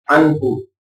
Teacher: انہو پر اظہار ہو رہا ہے تو لہذا یہاں پر گنہ نہیں کرنا، ان نہیں کرنا، انہو۔